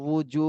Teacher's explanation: উজু, ওয়াও পেশ উ, ঠোঁটটা গোল করে উচ্চারণ করতে হবে উ। উজু, জুতে এক আলিফ টান দিতে হবে, পেশের বামে জজমালা ওয়াও মদের হরফ।